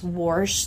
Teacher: that R-ful warsh that you will even hear all the way up in Pittsburgh